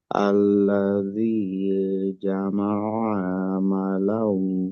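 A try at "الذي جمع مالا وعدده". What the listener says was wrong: হরকতের যে উচ্চারণগুলি আছে, ওইখানে যেন একটু লম্বা না হয় স্বাভাবিকের থেকে।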